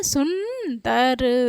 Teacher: अनुस्वार का उच्चारण करते समय हमारी नासिका पर बल जाता है